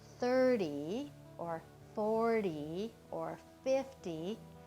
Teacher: it's always the first syllable that gets the full accent